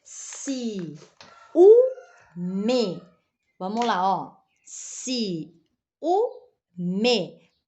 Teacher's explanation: Aonde recaiu a tônica? Ah, na penúltima.